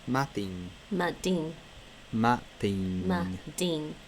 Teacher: The extra A there is just to make sure the D is still a broad D, not a slender D.